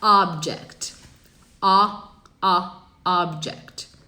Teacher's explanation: abrir a boca pra falar um A, mas sai um O